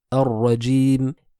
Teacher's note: il y a un roulement qui doit se faire, un takrar, une répétition de la lettre, mais qui est légère